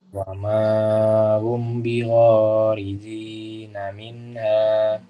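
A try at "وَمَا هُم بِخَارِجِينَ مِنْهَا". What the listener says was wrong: Mencoba bertemu ba harus disertai dengan Ya, coba ditambah dengung Ustaz.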